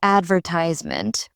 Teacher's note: British English stresses the second syllable instead of the third. The rhythm changes completely when I shift the stress and it sounds more formal.